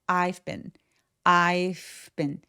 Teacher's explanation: 이렇게 빈처럼 자음 앞에서의 I의이 V 발음은 I빈 이렇게 열심히 발음하지 않으셔도 되고요. 조금 가볍게 F처럼 바람 소리만 살짝 흘러나오면 돼요. 그래서 I've been I've been 이렇게 좀 가볍게 처리하시면 됩니다.